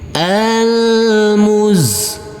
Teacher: huruf Zain karena di atasnya ada tanda baca tasdid kita tekan dan kita Tahan saja dengan dua harakat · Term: tasydid